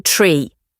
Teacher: Letter T said T, as in tree. A sharp puff of air follows T at the start of a word.